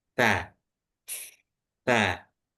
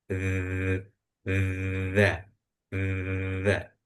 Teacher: kalau ta itu anginnya dulu keluar baru suaranya ta ta. Nah, berbeda dengan huruf dalal itu keluarnya berbarengan angin dan suara dza